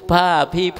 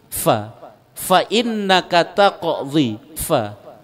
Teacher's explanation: Makhraj fa itu ujung gigi di atas dengan bibir di bawah sehingga keluar sedikit desir.